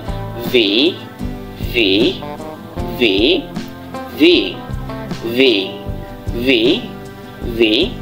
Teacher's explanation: ভিটা উচ্চারণ করবেন হচ্ছে যে আপনার উপরের দাঁতের মাড়ি দিয়ে নিচের ঠোঁটটাকে একটু চাপ দিয়ে বলবেন